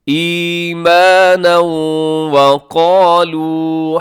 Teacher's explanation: فزادهم، فزادهم ایمانا وقالوا، یہاں پہ ادغام ہو رہا ہے، ایمانن پہ تنوین ہے، تنوین کے بعد واو ہے، یہاں پہ ادغام کیجیے گا غنے کے ساتھ